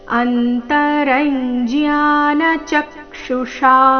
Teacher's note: ಚ ಮೇಲೆ ಆಘಾತ ಕೊನೆಗೆ ಷ ದೀರ್ಘ ಮೂರ್ಧನ್ಯ ಷ ಇದೆ ಆಕಾರದೊಂದಿಗೆ